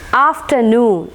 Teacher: So here both the syllables are stressed. After as well as noon is stressed. Afternoon, after and noon is stressed.